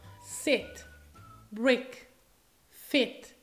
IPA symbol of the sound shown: ɪ